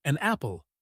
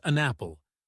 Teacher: with the N sound linking right into the A of apple